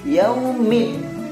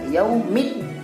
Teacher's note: Kalau alif lam syamsiah tidak dilepas bacanya seperti alif lam komariah, karena alif lam syamsiah idgham syamsiah, makanya hurufnya bacanya dimasukkan.